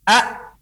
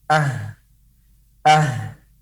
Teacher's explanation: huruf hamzah disukunkan maka pita suara tertutup contohnya adalah a-a-a-a maka pita suara tertutup berbeda dengan huruf H